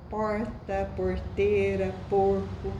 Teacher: a gente chama de retroflexo porque há uma retroflexão da nossa língua. A língua se vira para trás, né? Uma retroflexão. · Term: R retroflexo